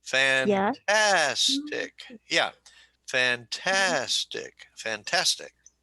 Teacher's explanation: three syllables emphasis on the second